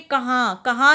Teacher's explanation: कहाँ नाक और मुंह दोनों से आवाज़ आ रही है, तो इसलिए ये अनुनासिक है और इस पर हमने चंद्र बिंदु लगाया है।